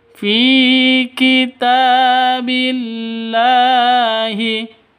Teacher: dibaca panjang dua ketukan karena ada ya mati diawali dengan kasrah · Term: mad thabi'i